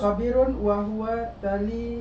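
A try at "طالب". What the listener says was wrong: bukan ta, itu to.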